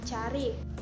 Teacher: ciri-ciri rendah depan tidak bulat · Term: a rendah